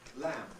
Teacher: the L and the M are fully voiced. Lamb. Whatever environment it's in.